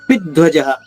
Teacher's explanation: ధ్వాలోని మొదటి అక్షరం మహాప్రాణి ధ ద్విత్వం చేసుకుంటూ